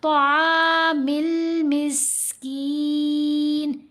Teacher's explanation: آئین کو لمبا کریں گے، میم کو لام سے ملائیں گے